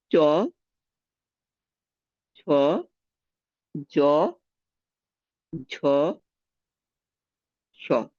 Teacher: সামনে শক্ত তালু স্পর্শ করে যে ধ্বনিগুলো উচ্চারিত হচ্ছে সেগুলো হচ্ছে তালব্য ধ্বনি।